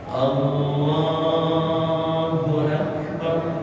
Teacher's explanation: ra-nya ra tafdhil, tebal, bar